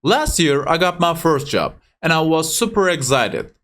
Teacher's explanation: en başta zaten Last year diye burada vurgulu bir şekilde stresi arttırarak cümlemize başlıyoruz